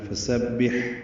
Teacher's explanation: ہا ساکن ہے، یہاں پہ ہمز کی صفت ہوگی، وسط حلق سے ہا ادا ہوتا ہے · فا کو جلدی سے ادا کرنا ہے، سین کو صفیر کی آواز سے ادا کرتے ہوئے با سے ملانا ہے، با کو ہا سے ملانا ہے۔